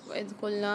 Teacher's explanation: وَإِذْ قُلْنَا میں دیکھیے ذال کو ہم نرمی کے ساتھ ادا کریں گے۔ جب ذال کو ہم ادا کرتے ہیں تو ہماری جو زبان کی نوک وہ اوپر کے دانتوں سے لگتی ہے